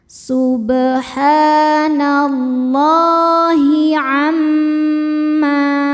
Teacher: Madnya adalah mad thobi'i muqaddar karena ada baris fathah tegak di atas huruf lam. Cara bacanya dipanjangkan dua harakat. Subhanallahi amma mim hukumnya ghunah musyaddadah karena mim bertasydid.